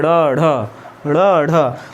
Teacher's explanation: ऐसे वर्ण जिनका उच्चारण करते समय जीभ जो है, जीवा मेरी झटके से ऊपर उठती है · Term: उत्क्षिप्त